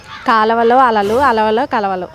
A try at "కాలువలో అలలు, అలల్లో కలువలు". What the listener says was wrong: అలవలు కాదు, అలల్లో కలువలు. కలువ పువ్వులు. అలల్లో కలువలు. కలవలు అంటే ట్విన్స్, అది కాదు. కలువలు పువ్వులు.